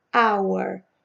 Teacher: Começa com H, mas esse H é como se não existisse, né? Não sai o som dele. O som é de A, hour.